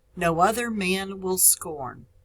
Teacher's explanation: no is a one-syllable word it is unstressed